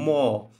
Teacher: নাসিক্য হ্যাঁ হ্যাঁ, ম নাসিক্য ঠিক আছে, কিন্তু উচ্চারণ হয় ওষ্ঠে। ম কিন্তু নাসিক্য ধ্বনি, যেহেতু এই 5টা নাসিক্য, কিন্তু উচ্চারণের স্থান হলো ওষ্ঠধ্বনি